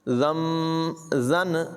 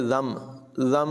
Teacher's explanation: और दूसरी बात देखें, यहाँ पर नून के ऊपर छोटा सा मीम लिखा हुआ है, ये तब होता है कि जब नून साकिन के बाद बा आ जाए तो वहाँ पर नून को मीम से बदल कर पढ़ते हैं। नून की आवाज़ यहाँ पर नहीं होगी बल्कि मीम को पढ़ा जाएगा। ज़म, ज़न नहीं पढ़ेंगे बल्कि ज़म ज़म, और गुन्ना भी करेंगे ज़ंबिन क़ुतिलत।